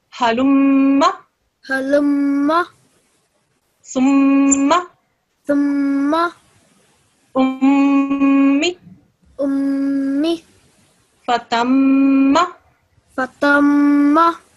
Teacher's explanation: You made sure that you extended the sound, and you did that for 2 seconds